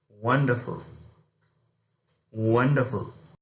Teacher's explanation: in the case of exclamatory sentences we again use falling tones